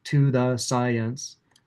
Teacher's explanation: And then for the N in science, the tongue tip will touch again. So, to the science, you'll see the tongue tip touch 4 times in a row.